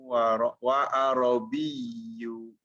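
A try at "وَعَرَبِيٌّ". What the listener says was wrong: Wa arabi. Tidak disebutkan dhammah akhirnya. Wa arabi. Bi.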